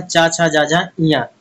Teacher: व्यंजन का उच्चारण जो है तालू से होता है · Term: तालब व्यंजन